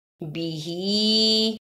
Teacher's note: ہا کنچے کھڑی زیر ہے، اس پہ تھوڑی دیر لگانی ہے